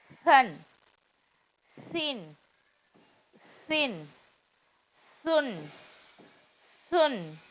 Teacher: சா சாவுடைய உச்சரிப்பு எங்கேருந்து வரும்? நுனி நாக்குல இருந்து இந்த சவுண்ட் வரணும். சன். சின் சின், சுன் சுன், ஜன் ஜன், ஜின்.